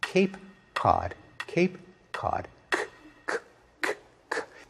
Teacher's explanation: In one case, the k is produced way back in the mouth. The other, it's produced much farther forward.